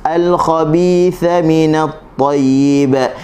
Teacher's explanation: huruf tha. Okey, hujung lidah di hujung gigi atas.